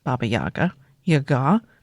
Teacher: the correct way to pronounce Baba Yaga, Yaga, the emphasis goes on the second syllable